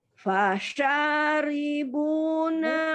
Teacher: rinya tipis ya, ketika dia kasroh dibaca tipis.